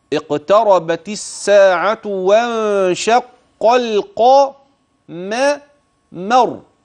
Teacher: اياك ان تدغم اللام هنا فاللام في كلمه القمر واضحه بينه مظهر القاف والميم والراء سكنت لاجل الوقف اسمع اقتربت الساعه